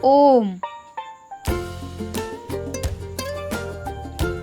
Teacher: ओम में हम ओ वर्ण को बहुत दीर्घ तक उच्चारित करते हैं। · प्लुत स्वर के उच्चारण में [संगीत] हमें ह्रस्व और दीर्घ स्वर की अपेक्षा तिगुना समय लगता है।